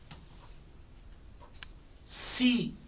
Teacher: teeths के दरमियान से पैसेज बना के हवा को निकाला